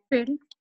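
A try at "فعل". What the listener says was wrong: fi'al. Fi'al. Not fail. It's fi'al.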